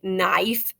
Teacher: Whenever we have KN together, the K is silent and we just hear the N sound. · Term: silent K